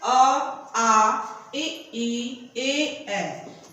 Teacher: अवृत्तमुखी, इसमें ओष्ठ गोलाकार नहीं होते हैं।